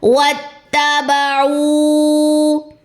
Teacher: 4 counts لمبا ہوگا، کیوں؟ کیونکہ واو مدہ کے بعد حمزہ آ رہا ہے۔